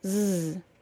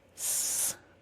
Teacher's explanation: the Z sound is voiced and the S sound is unvoiced